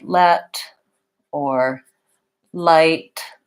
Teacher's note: the front of my tongue goes up behind my teeth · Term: light L